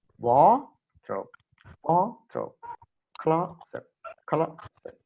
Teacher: So I mean the stress is on the first syllable.